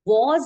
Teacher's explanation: but even in this word was I don't have two WBLS but my S is still making the z sound